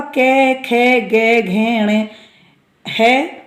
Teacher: कवर्ग का के, खे, गे, घे, अणे, है और विसर्ग इनका उच्चारण स्थान कंठ